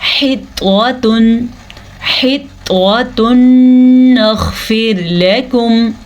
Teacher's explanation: تنوین کے بعد نون آیا ہوا ہے، تو ان کو ہم آپس میں ملائیں گے غنے کے ساتھ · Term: ادغام بالغنہ